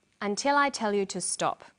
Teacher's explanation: In English, statements usually end in a falling tone. The falling tone at the end tells the listener that the statement is finished.